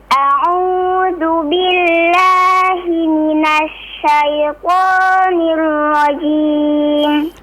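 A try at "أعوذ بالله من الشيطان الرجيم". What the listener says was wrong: Huruf ra-nya ditebalkan lagi, Cing, coba. Nirra, nirra.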